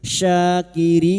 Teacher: Syakirin. Rin bertemunya mad dengan huruf hidup yang dibaca wakaf. Mad arid sukun. Empat harakat kita panjangkan. · Huruf syin sya alif kecil di atas dua harakat. Kita panjangkan mad thai. Syakirin.